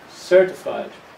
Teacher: The first syllable is the strong one, certified accountant.